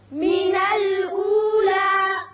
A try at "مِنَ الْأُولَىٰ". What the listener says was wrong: اب یہاں وقت کی صورت میں لا الف کے برابر آواز رہے گی، لمبا نہیں کریں گے۔ من الاولی یہ غلط ہے، من الاولی،